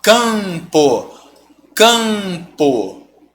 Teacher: Pô esse M você não pronuncia Ele só tá me dizendo que esse ah é nasal por isso isso que a gente chama de um dígrafo vocálico